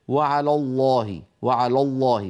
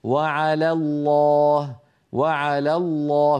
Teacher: فيرقق لام على ويفخم لام لفظ الجلاله · لام لفظ الجلالة في كلمة على الله مفخمة، لكن لام على ليست مفخمة، فلا يصح أن يقول القائل وعلى الله وعلى الله، بل يقول وعلى الله وعلى الله، فيرقق لام على ويفخم لام لفظ الجلالة